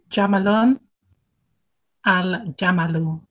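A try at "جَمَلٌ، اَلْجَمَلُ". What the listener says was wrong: Yep.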